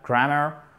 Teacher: Accent tonique sur la première syllabe.